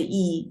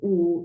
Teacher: And when you say E, it is in the front. When you say U, it goes back.